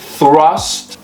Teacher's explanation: so your tongue needs to be between your teeth